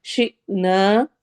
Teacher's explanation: نا پہ الف مدہ ہو رہی ہے تو ہم الف کو لمبا کریں گے 2 حرکہ